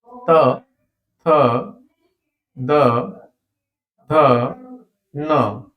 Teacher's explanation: त थ द ध न ये हमारे दंत से है ता दांत की सहायता से बोला जाता है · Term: त वर्ग